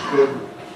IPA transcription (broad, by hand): gʊd